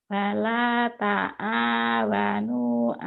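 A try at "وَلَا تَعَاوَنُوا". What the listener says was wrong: Ainnya tuh. Wala ta'a. Dikit lagi ainnya bagus deh. Wala ta'a.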